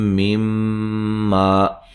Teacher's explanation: میم مشدد پہ غنہ ضروری ہے، ٹھیک ہے. ما الف مدہ ہے.